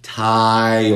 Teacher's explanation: Si estás escuchando tú, una O ahí después de I, es por la L oscura. Tile. Oh, estamos levantando la parte trasera de la lengua.